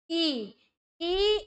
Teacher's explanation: ई ई आपके तालू तालू से बोला जाता है